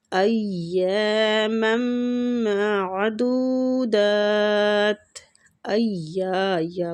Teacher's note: یا کو کھینچیں گے، الف مد ہو رہی ہے، معدودات، میم مشدد اور میم کو میم کے ساتھ ملائیں گے تو ادغام مال غنہ ہوگا۔